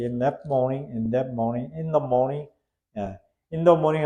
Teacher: 앞에 th 사운드가 앞에 n가 연결돼서 in the 이렇게 되죠